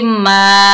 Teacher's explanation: मीम के ऊपर जबर, आगे अलिफ खाली है, ये अलिफ मद्दा है, एक अलिफ की मिकदार खींच कर पढ़ेंगे